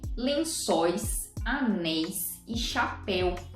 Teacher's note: veja que todos esses ditongos que encerram essas palavras são abertos